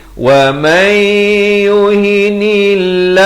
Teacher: Kemudian kita jumpa waqaf qili di sini afdal diwaqafkan dan ibtidak pada wa may, masuk beserta dengung, bukan waman tapi wa may yuhinillah. Lafaz jalalah di sini dibaca nipis. Jangan pula kita baca tebal.